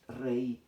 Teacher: Cambia el grafema, pero el sonido sigue siendo cerrado, la I.